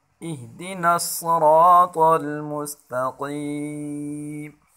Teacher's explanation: اور قاف کو یہاں موٹا پڑھیں گے